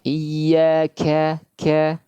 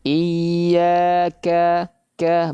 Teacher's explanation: Kalau kaf yang berharakat maka hamasnya lebih ringan. Kaf yang sukun hamasnya lebih kelihatan, lebih terdengar.